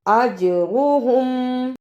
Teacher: اجرہم، جیم پر جزم کی صورت میں قلقلہ کرنا ہے. اج را کو پر پڑھنا، ہم جلدی پڑھنا